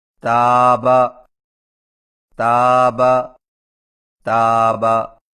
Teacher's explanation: تا کی ادائیگی میں زبان کی نوک کو سامنے والے اوپر کے 2 دانتوں کی جڑ سے لگا کر باریک آواز میں پڑھیں، جیسے تابا، تابا، تابا۔